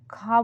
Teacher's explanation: हवा सीधी बाहर निकल जाएगी। ख बोलेंगे तो जीभ कहीं टच नहीं होगी। सीधा गले से आवाज निकलेगी।